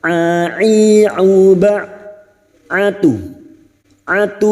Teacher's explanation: Huruf ain yang memiliki sifat tawasud dan jahar.